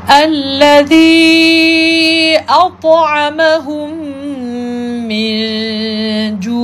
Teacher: kita panjang sedikit sebab nak menjelaskan kejelasan sebutan huruf ain